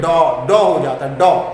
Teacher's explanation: आगत स्वर है तो इसका उच्चारण भी आपका कहाँ से होता है? पश्च भाग से होता है